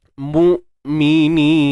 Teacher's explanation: Hamzah ni kita syiddah, tahan suara. Mu'mini, dua harakat mat asli.